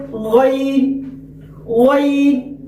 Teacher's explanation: حلق کا جو شروع والا حصہ جو منہ کی جانب والا ہے، جو ادنائے حلق، اس سے غین ادا ہوتا ہے۔ جیسے غین غین، بہت سارے غین کہتے ہیں، اس طرح نہیں، غین غین، یہ ادنائے حلق۔